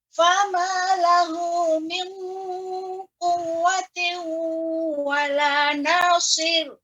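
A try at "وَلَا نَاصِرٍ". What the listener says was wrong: Nasir. Tidak nasir, itu tebal. Nasir. Nasir. Lebih di caranya rahnya sedikit dikebawahkan.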